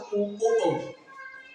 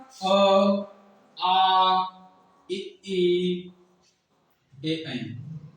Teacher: जिसमें ओष्ठ हमारे गोल हो जाए बोलने में, वह हमारा वृत्ताकार होते हैं